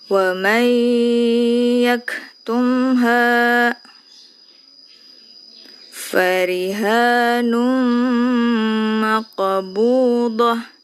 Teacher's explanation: Tanwinnya tidak dibaca, langsung dimasukkan ke huruf mim bacanya